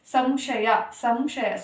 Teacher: ಸೊನ್ನೆ ಮುಂದೆ ಇರುವಂತಹ ಅಕ್ಷರ ಷ ಷ ಬಂದು ಅವರ್ಗೀಯ ವ್ಯಂಜನ ಅವರ್ಗೀಯ ವ್ಯಂಜನ ಅಂದ್ರೆ ಮ ಅಕ್ಷರವನ್ನ ಉಚ್ಚಾರಣೆ ಮಾಡ್ತೀವಿ